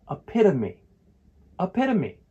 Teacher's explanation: For a guide to help you pronounce this word, use this, epitome, epitome. It has four syllables. And the stress is on the second syllable